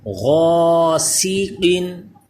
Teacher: یہ الف پر ہوگا کیونکہ حروف مستعلیہ ہے غین، اور قاف بھی پر، سین باریک ہوگا البتہ